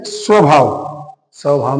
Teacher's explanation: स्वभाव में भी उ नहीं होता लेकिन उच्चारित हो रहा है